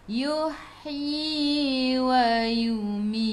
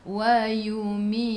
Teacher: Sikit sahaja angin pada huruf ta. Ta sifat hurufnya hamas, jadi kena ada angin. Tapi jangan banyak.